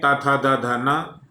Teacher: दंत्य वर्ण है त थ द ध न